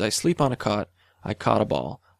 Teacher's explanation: I say them exactly the same